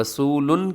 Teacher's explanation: رسول، یہاں را کے اوپر زبر ہے، را موٹی پڑھی جائے گی